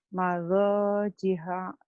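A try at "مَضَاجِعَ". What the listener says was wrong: Ainnya kurang pas ya.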